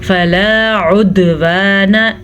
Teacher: دال کے اوپر قلقلہ ہو رہا ہے کیونکہ دال کے اوپر ساکن ہے اور دال حروف قلقلہ میں سے ہے تو اسی لیے ہم یہاں پہ قلقلہ کریں گے.